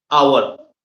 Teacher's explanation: the h is silent. Okay? And it starts with an o sound.